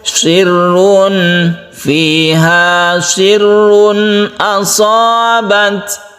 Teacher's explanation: tanwin bertemu dengan hamzah kita sebut dengan izhar halqi. Ini harus jelas juga, tidak boleh berdengung.